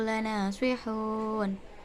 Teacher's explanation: Lana terdapat bacaan mad tabi'i sebab fathah diikuti dengan alif. Sihuna diwakafkan menjadi sihun karena dibaca mad arid li sukun